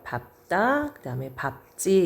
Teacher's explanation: 앞에 있는 리을이 탈락하고 비읍이 사용이 되는 거예요.